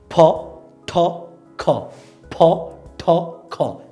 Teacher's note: ফটা দুই ঠোঁট থেকে হবে, ঠটা জিভের অগ্রভাগ উপরের তালু থেকে লাগবে ঠ, আর খটা গলার ভিতর থেকে আসবে খ। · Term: অ্যাসপিরেটেড সাউন্ডস